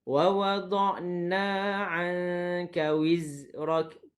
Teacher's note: pada huruf Zai, jelaskan sedikit sifat sofirnya.